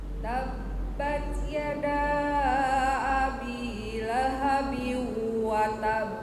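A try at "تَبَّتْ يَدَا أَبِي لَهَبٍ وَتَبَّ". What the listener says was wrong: Nah, tahan dulu. Abi lahabiu, abi lahabiu, langsung nempel ke wawunya.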